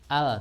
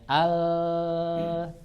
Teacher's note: Tapi kemudian suaranya yang harif, menyamping ke kanan dan ke kiri. Al, dia tertahan oleh lidah, tapi tidak sepenuhnya tertahan, masih bisa keluar dari samping. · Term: huruf lam